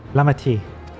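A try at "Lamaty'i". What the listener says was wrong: I think you say it Lama-Chi, right? Like almost like a chi.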